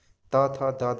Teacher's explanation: जिनका उच्चारण ऊपर के दांतों पर जीभ लगाने से होता है, दंत कहलाते हैं